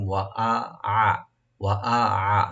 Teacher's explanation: হামজা গলা শেষ থেকে, আইন মধ্যখান থেকে